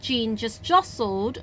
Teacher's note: 個T咧喺N後邊嘅話咧，其實佢省略咗都得嘅，因為N同T嗰個讀法咧係嗰個位置係一樣嘅條脷